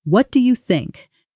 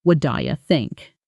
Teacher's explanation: The T in what softens, and do you blends together.